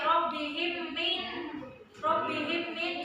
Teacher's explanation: mim mati bertemu dengan mim dan dibaca dengan dengung atau ditasdidkan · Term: idgham mimi